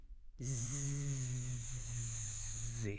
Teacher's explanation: But for Z, you turn on your voice box. You add the vibration.